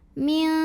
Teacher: Jadi saat membunyikan nun sukun kita sudah siap-siap ke makhraj huruf kaf, ke pangkal lidah siap-siap. Nah karena kaf ini makhrajnya jauh dari nun, maka ini bunyi dengungnya sudah besar. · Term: ikhfa